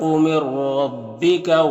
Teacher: نون ساکن کے بعد را ہے حروف یرملون میں سے تو نون کو را سے ملا کر بغیر غنہ کے پڑھیں گے ، اس کو ادغام تام کہتے ہیں، یہاں پر را مشدد